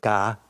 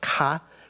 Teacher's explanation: the ga, the paper shouldn't move, but ka, where you have a kiok sound, the paper will move because there's wind coming out of your mouth